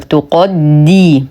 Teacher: نرقق التاء نفخم القاف نرقق الدال مع اتمام الكسر